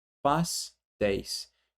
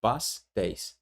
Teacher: De fato, pastéis termina em ditongo aberto, EI seguido de S.